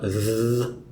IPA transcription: ð